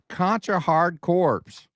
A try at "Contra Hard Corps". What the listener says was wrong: The PS is silent.